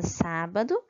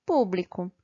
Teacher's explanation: as palavras proparoxítonas, que são aquelas em que a sílaba tônica é a antepenúltima